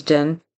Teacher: he says the D instead of a th for then